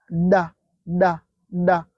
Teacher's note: Donc là, la lettre D est prononcée, accentuée. Et pour dire da, da, da, la langue touche le palais.